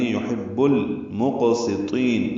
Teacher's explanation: یحب میں یا کو معروف طریقے سے ادا کریں گے، ہا وسط الگ سے ادا کریں گے، با کو لام سے ملا دیں گے. یحب المقسطین، لام ساکن پہ اظہار قمری، قاف ساکن پہ قلقلہ، سین باریک، طا پر، اور طا کو لمبا کریں گے.